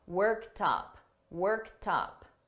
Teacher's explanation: when I combine it with worked up, I'm going to link these together and you're going to hear that T in front of up